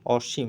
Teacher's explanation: ম এর সাথে অটা উচ্চারণ করা যাবে না